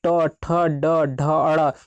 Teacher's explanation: इसी तरह से अगला है दोस्तों ट, ठ, ड, ढ, अड़, इसको मूर्धा से बोलते हैं। यानी कि जो हमारा जो नोक होता है जीभ का मूर्धा में टच कर जाता है, जैसे ट को बोलेंगे, ठ को बोलेंगे, ड को बोलेंगे, ड़ को बोलेंगे, तो हमारा जो जीभ होता है मूर्धा में टच कर देता है, जिसके कारण इसे मूर्धा कहते हैं।